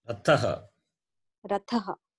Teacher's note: Tha, it is dental. Tha. Mahaprana.